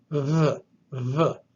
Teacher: So to do this, you put your lips together, but you allow the air to kind of squeeze through them. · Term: Vita